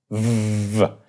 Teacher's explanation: a fricative means you kind of continue to let the air go through with the two lips. So it becomes vv. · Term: voiced bilabial fricative